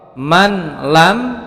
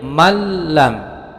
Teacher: cara membacanya ditasydidkan tidak mendengung dan pendek atau cukup ditahan pendek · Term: idgham bilagunnah